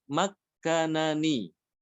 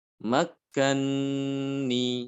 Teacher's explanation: Makanani aslinya itu ya. Nun yang pertama itu diidghamkan ke nun yang kedua. Makani seperti itu. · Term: idgham kabir